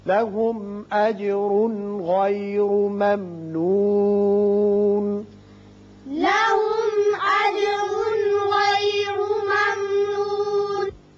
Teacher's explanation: इस मीम पर इजहार होगा, इजहार शफवी। यहां तनवीन के बाद गाइन है, यहां इजहार हल्की होगा और इस मीम पर दोबारा इजहार शफवी होगा।